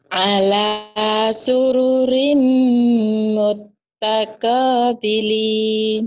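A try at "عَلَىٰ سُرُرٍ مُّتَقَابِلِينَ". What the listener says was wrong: Udah benar, tapi tanya jangan mut takobilin, nggak ada tasdid Bu. Mutako ya Bu.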